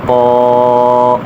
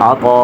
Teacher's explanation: عذاب، وقفا عذاب، عین زبر ع، طا الف مد زبر طا، طا کو موٹا کریں گے اور کھینچ کر پڑھیں گے 3 یا 5 الف